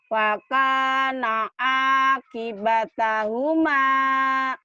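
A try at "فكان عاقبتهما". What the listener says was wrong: Kenapa nggak bisa F?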